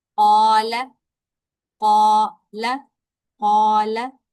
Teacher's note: इसको एक अलफ लंबा करके पढ़ा जाता है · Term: अलिफ मद्दा